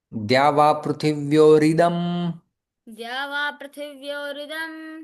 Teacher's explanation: विसर्ग का रेप में परिवर्तन होता है। री आ जाता है।